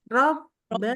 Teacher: Jadi waktu pas bibirnya ketemu tuh suaranya berhenti.